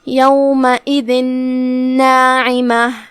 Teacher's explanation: یہاں بھی حکم ہے ادغام بغنہ، تو ہم یہ تنوین کو نون میں داخل کر کے غنہ کے ساتھ اور تشدید کے ساتھ یہ حکم کو ادا کریں گے